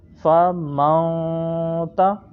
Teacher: اس میں آپ کے ہونٹ گول نہیں ہوں گے، منہ آپ کا کھلا ہوگا، ہونٹ گول نہیں ہوں گے، یعنی کہ راؤنڈ جو ہے وہ لپ نہیں کرنے، بلکہ بائی اوپننگ دا ماؤتھ اس کو ہم نے پروناؤنس کرنا ہے۔ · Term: حروف اخفا کا غنہ